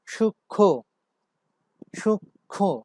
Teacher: আর last যে আমরা উদাহরণটি দেখতে পাচ্ছি সূক্ষ্ম, সূক্ষ্ম, তো এটার উচ্চারণ সূক্ষ্ম না, সূক্ষ্ম না, সূক্ষ্ম। শেষ ধ্বনিতে একটু অনুনাসিকতার সৃষ্টি হয়েছে।